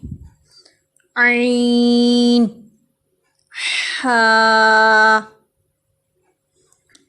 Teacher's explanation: وسط حلق سے، یعنی حلق کے درمیانی حصے سے، یہاں سے عین اور ہا ادا ہوتے ہیں